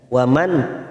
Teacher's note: nun sukun bertemu Hamzah namanya bacaan idhar halq jika kita mendengar kata izhar maka itu dibaca jelas tanpa mendengung